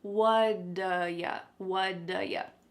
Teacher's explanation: Nope, that T at the end of the word what is going to change to a D sound. This is really typical of American English, where a T that's surrounded by vowel sounds is going to change to a D. It's called a flapped T, and it just kind of rolls off your tongue in a smooth way.